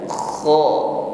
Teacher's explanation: tebalkan bunyi huruf kho, ada gesekan di tenggorokan, ada bunyi dengkur ya